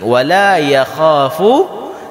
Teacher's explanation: Ya kha, jangan dibaca wala yakha. Kha, lidah kita yang belakang tetap naik. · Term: Huruf kha